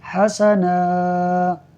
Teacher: وقف کی صورت میں یہ دو زبر الف مدہ سے بدل جائے گا، یعنی نون کو کھینچ کر پڑھیں گے، تو ہم پڑھیں گے حسنا، یعملون الصالحات ان لهم اجرا حسنا۔